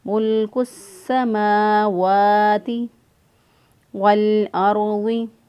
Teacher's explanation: वाव खड़ी ज़बर वा, इसको भी एक अलिफ के बराबर लंबा करेंगे